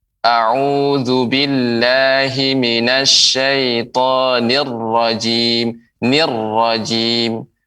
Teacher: pengucapan roh jadi dia tidak boleh terlalu banyak getarannya